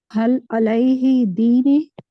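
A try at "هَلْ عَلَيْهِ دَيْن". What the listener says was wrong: देन है, दीन नहीं है ये, देन।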